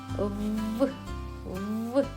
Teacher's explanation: Звук В приголосний дзвінкий. Коли ми його вимовляємо, губи стискаються, а повітря долає перешкоду. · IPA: [в]